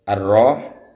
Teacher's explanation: Di situ adalah bacaan asy-syamsiyah karena alnya dibaca samar.